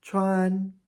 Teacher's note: First tone is high and flat, kind of like you're singing. Chuan. It's not elongated.